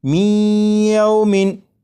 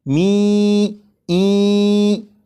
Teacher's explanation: ادغام اس طرح کے نون ساکن کو یا میں شامل کر کے پڑھا جا رہا ہے اور غنہ کر کے پڑھا جا رہا ہے